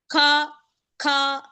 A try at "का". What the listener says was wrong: You can see my face how I'm just pronouncing it. So this is tongue is here, down. Ka, ka, ka, ka, ka. Not kha. Ka, ka. Ka.